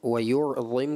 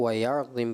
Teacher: آپ نے وَيُعْظِمْ کو فتح کی طرف لے کے گئے، زبر کی طرف لے گئے